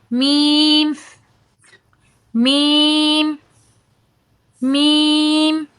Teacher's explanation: मीम अब आप इसके अंदर यह महसूस कर रहे होंगे कि आपके होंठ का ऊपर वाला खुश्क हिस्सा नीचे वाले खुश्क हिस्से से मिल रहा है · جب دونوں ہونٹوں کا خشک والا حصہ آپس میں ملے تو حرف میم ادا ہوتا ہے۔